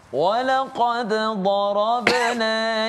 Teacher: dad itu kita pergi ke tepi lidah, ya, tepi gusi kita, dan kita tekankan pada huruf dad